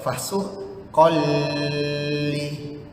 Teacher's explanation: Lam dan ra dia tidak berdengung tapi dia masuk ke dalam huruf lam atau dalam huruf ra tu. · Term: tanwin yang tidak sekata